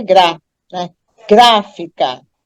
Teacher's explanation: a gente percebe logo que a sílaba mais forte é gra, né? Gráfica. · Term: sílaba tônica